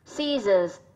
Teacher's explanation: trọng âm rơi vào âm tiết thứ nhất